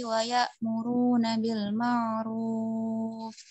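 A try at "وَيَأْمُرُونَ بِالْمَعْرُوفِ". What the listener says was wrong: Sudah usahakan wa ya'muruna itu hamzah atau ain? Oke, makanya hamzah itu dia kayak terputus dengan huruf setelahnya. Wa ya muru. Nah, kalau wa ya muru itu kayak ain nanti. Jadi harus beda antara ain yang bainiyah dengan hamzah yang syiddah.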